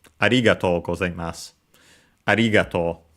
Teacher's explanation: Even though you'll often hear it with seemingly different accents, also because of the emphasis given to this word, but technically the pitch accent is arigatou. So high only on the ri.